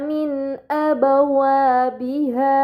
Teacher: Kemudian pada kata min abawabiha terdapat nun sukun bertemu dengan huruf hamzah, ini dinamakan izhar halqi, maka nun sukun dibaca secara jelas